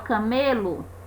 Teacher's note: Apesar de camelo, e muitas vezes a gente pronunciar com o sonzinho de U no final, camelo, é escrito com O, porque nós temos a penúltima sílaba a mais forte.